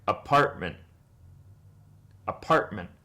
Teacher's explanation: there is a glottal stop or a brief pause after the vowel